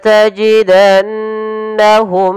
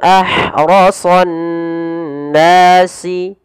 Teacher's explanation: kemudian bertemu Hamzah ini kita namakan dengan izhar syafawi dan yaitu harus dibaca dengan jelas suara mimnya tanpa ada penahanan